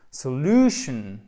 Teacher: quand le mot se termine en shun, vous avez l'accent tonique sur la syllabe précédente, donc sur l'avant-dernière syllabe